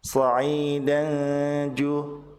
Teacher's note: Sementara tanwin bertemu dengan jim, maka tanwin dibaca samar, ditahan 2 harokat disertai dengan gunnah.